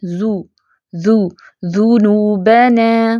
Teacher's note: अब जाल की पेश को होठ गोल करके अदायगी करेंगे तो ठीक साउंड आएगी · اب زال کی پیش کو ہونٹ گول کر کے ادائیگی کریں گے تو ٹھیک ساؤنڈ آئے گی